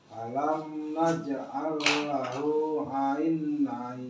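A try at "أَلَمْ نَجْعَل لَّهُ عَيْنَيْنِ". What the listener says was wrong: Ain. Tapi enggak dipanjangin. Bukan dipanjangin ain. Biasa aja. Ya gitu biasa aja ain.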